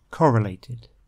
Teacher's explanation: The stress for that word is on the first syllable